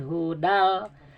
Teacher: tanwin menghadapi lam itu idgham. Suara tanwin masuk ke lam, asalnya hudan